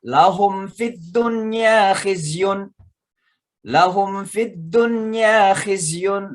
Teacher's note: Lahum fi, itu mim mati ketemu fa, namanya izhar mimi karena wajib mimnya dijelaskan. Cara bacanya jelas, ya.